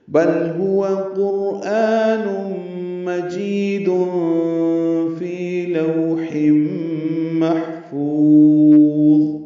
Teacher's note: محفوظ ہا ساکن ہے، اس میں ہمس ہے، فا کو لمبا کریں گے، ضا پر پڑھیں گے.